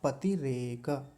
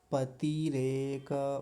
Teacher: पतिरेक त पर छोटी इ की मात्रा है। जल्दी बोली जाएगी। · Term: ह्रस्व इकार